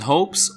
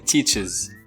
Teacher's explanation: The final S or ES can be pronounced as S, as in hopes, or Z, as in loves, or is, as in teaches. We choose the appropriate pronunciation based on the sound at the end of the verb. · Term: pronunciation of the third person S